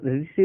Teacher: ठीक है, मतलब उच्चारण के आधार पर है। यदि हम ऋषि बोलते हैं तो हमारी जीभ क्या बताए ऊपर तालू से जाकर टकराती है